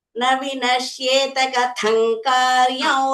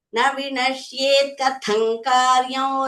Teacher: when you are saying vinashyeta, it is halanta, so don't say ta.